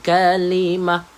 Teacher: Kita tukarkan ta itu kepada huruf ha.